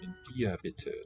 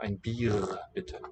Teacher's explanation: Well, depending on region, this standard High German dialect that we're hearing has a uvular trill in an onset, left of a vowel, and it vocalizes to an ah sound after a vowel